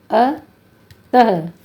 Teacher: अः को विसर्ग कहते हैं जो हल्के स्वास के साथ उच्चारित होता है